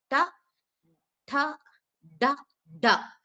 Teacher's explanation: நாக்கோட நுனிமேல் அன்னத்தை தொடற மாதிரி லைட்டா சொல்றது. ட ட ட ட சேம் அதே மாதிரிதான் காத்து வெளியில வரணும் டக்கு டாக்கும் காத்து வெளியில வந்து நம்ம சொல்லணும்.